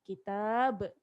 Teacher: Mestilah kita qalqalahkan ba ni. Kita matikan ba ni. Kitab, ada qalqalah.